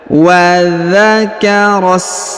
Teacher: huruf ra-nya langsung kita sambung ke huruf sa yang berharokat sukun ini. Di depannya terdapat alif, ini namanya hamzah wasol ya.